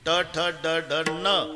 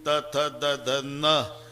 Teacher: ट ठ ड ढ न, दाताशी संबंध नाही. त थ द ध न, दाताशिवाय उच्चार नाही.